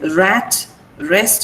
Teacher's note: Now you have to be very careful with this r sound also because r is, the sound is rolled.